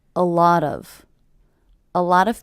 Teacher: with the stress happening on the middle word